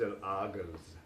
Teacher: And of course in Egypt it would be pronounced el agaz, as the J is pronounced as a hard G in Egyptian dialect